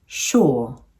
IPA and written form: ʃʊə(r) (sure)